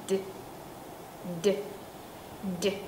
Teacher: âm d là âm rung, lưỡi y nguyên như vậy nhưng mà nói chữ d giống như chữ d của tiếng Việt vậy đó, cổ rung.